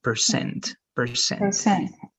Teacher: the stress is going to be in the second part